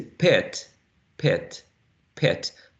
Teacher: the vowel sound is not exactly the same because the the tongue is getting ready for the next sound